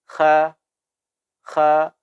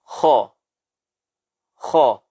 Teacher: Berarti huruf kha adalah huruf yang mesti kita berikan haknya untuk ditafkhimkan, untuk ditebalkan. Tidak boleh kita ucapkan kha, tapi mesti kita tebalkan kho, ya, seperti ada vokal o di akhirnya. Kho, bukan kha. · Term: Suara tafkhim